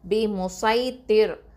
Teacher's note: இந்த ராவை எப்போவுமே தர்க்கிக்கா மெல்லினமாக தான் ஓதணும். ஓகேவா, அதுக்கு முன்னாடி உள்ள எழுத்து தால கெசரா இருந்தாலும், அதாவது ஹெவி லெட்டரில் கெசரா இருந்துச்சு அப்படின்னு சொன்னால் கூட நம்ம வந்து ராவை வந்து தர்க்கிக்கா மெல்லினமாக தான் ஓதணும்.